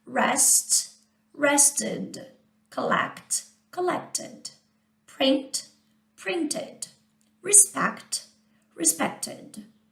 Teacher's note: as palavras que terminam com o som do T, acrescenta também o id · quando termina com o som do t, para não ficar t, a gente vai acrescentar uma sílaba, que seria o id. Também não é ed, é id. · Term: uma sílaba a mais